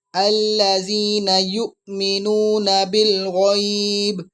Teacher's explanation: حمزہ یا الف پر جزم ہو تو اس کو جھٹکا دے کے لفظ کو پڑھتے ہیں۔